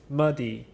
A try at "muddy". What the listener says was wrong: Muddy, good.